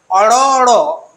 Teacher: অর্থাৎ তাড়না করছে যেমন অর র যদি উচ্চারণ করা হয় তাহলে জীবটা একবার তালুকে টোকা দেবার মত স্পর্শ করছে · জীবটা একবার তালুকে টোকা দেবার মতো স্পর্শ করছে শ্বাসবায়ুর গতিপথে, এবং সাথে সাথে শ্বাসবায়ুর জীবটাকে যেন এমনভাবে সরিয়ে দিচ্ছে যেন মনে হচ্ছে জীবটাকে তাড়না করছে। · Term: তাড়িত ব্যঞ্জন ধ্বনির, তাড়িত ব্যঞ্জন ধ্বনি